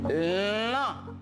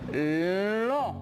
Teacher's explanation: Je le fais avec la bouche, mais l'air aussi passe par le nez. Lo hago con la boca, pero también el sonido sale en la nariz. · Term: voyelle nasale